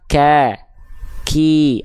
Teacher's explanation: mengakibatkan huruf Kaf itu ada percikan nafasnya nama sifatnya hams